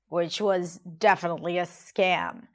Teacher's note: Now here I want to talk about her intonation or even more particular her tone of voice. She drops down in her voice, which was definitely a scam.